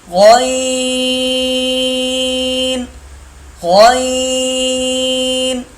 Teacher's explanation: حلق کے شروع سے جو منہ کی طرف ہے، خا اور غین ایک ہی جگہ سے ادا ہوتے ہیں۔